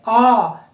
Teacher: अ को जितनी देर में हम उच्चारित कर लेते हैं उससे दुगना समय लगता है आ को उच्चारित करने में। तो हम ये कह सकते हैं कि मात्रा काल अर्थात आ के उच्चारण में 2 मात्रा काल की अवधि लगती है, ठीक है।